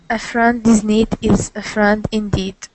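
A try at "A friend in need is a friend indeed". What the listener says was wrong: Okay, nice long E's. E, need, indeed.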